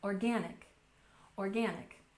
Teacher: And finally, we have organic, with a stress on the second syllable.